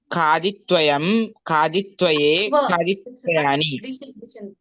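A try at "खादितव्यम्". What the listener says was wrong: Diction, wait. It is not tvayam, it is tavyam. It is khaditavyam.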